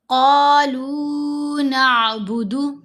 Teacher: قاف کو موٹا پڑھیں گے، ساتھ الف ہے، لمبا کر لیا، لام کے اوپر پیش ہے، ساتھ واو ساکن ہے، واو مدہ ہے، لام کو بھی لمبا کر لیا، صرف دو حرکات کی مقدار.